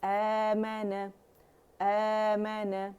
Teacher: الف صغیرہ جو ہے یہ حمزہ کی آواز کو کھینچے گی